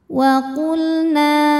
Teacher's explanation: lam sukun kita bunyikan dengan jelas ini namanya lam mutlak